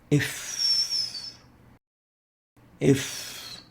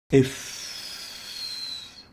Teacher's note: It articulates at the lips, between the lower lips and the upper teeth. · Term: labiodental